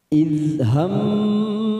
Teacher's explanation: Dal sukun jangan sampai memantul karena bukan qalqalah, kita tahan.